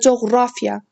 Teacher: Coğrafiya raya düşür, yəni ikinci hecanın üzərinə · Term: vurğu